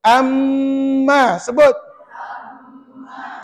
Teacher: mim tu sebutannya di bibir tak payah guna lidah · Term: idram syafawi